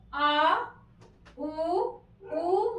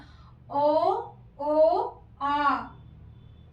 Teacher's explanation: जिवा के पश्च भाग से उच्चरित होने के कारण पश्च स्वर कहते हैं।